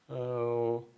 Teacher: lips really forward and tongue really back · my lips come forward my tongue is going back up